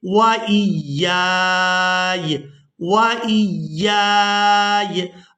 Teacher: وجہ سے کھینچتے ہوئے اس یا ساکن کے ساتھ ملائیں گے، جب ہم نے یہاں پر وقف کرنا ہے تو وقف کی صورت میں یہ جو یا ہے یہ ساکن ہو جائے گی ، پہلی یا کو الف مدہ کی وجہ سے کھینچتے ہوئے